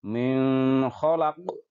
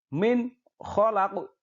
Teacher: Cara membaca hukum bacaan idhar halqi harus dengan jelas, yaitu tanpa dengan mendengung.